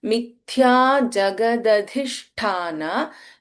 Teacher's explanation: Mithya, in Mithya, Tha is Mahaprana